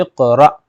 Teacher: جائے گا حمزہ قاف زیر اق اور را حمزہ زبر را، اس کو جھٹکا دے کر پڑھیں گے کیونکہ حمزہ ساکنہ میں جھٹکا ہوتا ہے · یہ جزم آ گیا تو یعنی حمزہ ساکنہ بن گیا، تو حمزہ ساکنہ کے پڑھنے میں جھٹکا ہوتا ہے